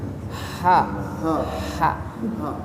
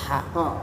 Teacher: Ha itu tengah tenggorokan. Ha. Dari sini nih.